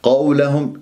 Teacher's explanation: الواو ساكنة قبلها قاف مفتوحة فراح يكون عندي واو لين والقاف مفخمة مرتبة ثانية ق ق وليس ق لا ق قو